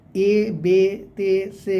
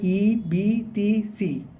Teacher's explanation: জেরকে তাড়াতাড়ি পড়া, টান না দেওয়া, ই পড়া, এ থেকে বাঁচা।